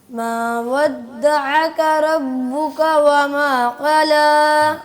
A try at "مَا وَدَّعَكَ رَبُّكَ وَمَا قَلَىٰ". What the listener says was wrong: اس میں را کو بھی موٹا کریں گے اچھا کافی ساری اس میں مسٹیکس آپ کی مکس ہو رہی ہیں, تو ایک ایک کر کے آپ درست کر لیں.